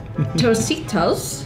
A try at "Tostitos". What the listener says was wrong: Yeah, Tostitos, good.